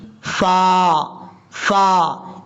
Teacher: اوپر والے جو دو دانت ہیں ان کا کنارہ نیچے والے ہونٹ کی تری والی جگہ پہ لگے گا تو فا پڑھا جائے گا